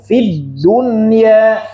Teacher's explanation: Fi-nya jangan panjang kalau gini Bu ya, langsung ke dal.